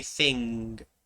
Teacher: That ng sound, which is at the back of your throat.